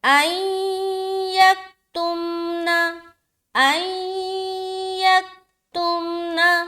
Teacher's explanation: یہاں پر دیکھیے نون ساکن ہے اور نون ساکن کے بعد حرف یا آ رہا ہے تو یہاں پر ہم ادغام ناقص کا قاعدہ کریں گے، یعنی کہ ملا کر پڑھیں گے اور غنہ بھی کریں گے